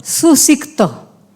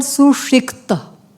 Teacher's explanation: So sa becomes sho. Dantya becomes retroflex.